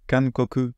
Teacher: on prononce bien koku sans voisement. Koku, koku, c'est pas voisé, vous voyez, c'est en que, koku.